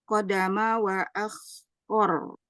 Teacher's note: Huruf rnya dibaca ee dibaca tebal